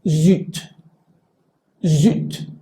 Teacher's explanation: la Z, tiene esta característica de sonido que es zumbado al inicio o si está en medio de la palabra. Y entonces la tendencia es que esto, por ejemplo, se pronunciaría zut, zut.